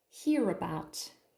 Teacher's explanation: there's a schwa here in about, and the stress is on about.